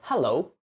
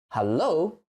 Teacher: English, we stress the first syllable, but for Chinese, we stress the second one.